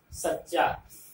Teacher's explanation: सच्चा, स पर बलाघात, यहाँ स्ट्रेस देना है